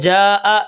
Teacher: 4 الف 5 الف کھینچ کر پڑھیں گے، اور یہ مد واجب ہے۔ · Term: مد متصل